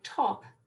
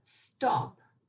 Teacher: the T has a little bit of a plosive air that goes with it. If you have a non-aspirated T, as in stop, the T doesn't have the aspirated form.